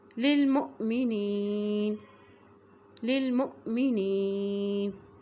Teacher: اسی طرح دیکھیں یہ حمزہ کے اوپر جزم ہے، جب یہ حمزہ کے اوپر جزم آتی ہے تو وہاں پہ جھٹکا دے کے پڑھا جاتا ہے۔